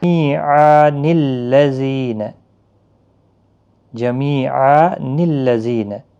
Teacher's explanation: تنوین کے بعد جب بھی ساکن یا مشدد حرف آتا ہے تو نون قطنی لگتا ہے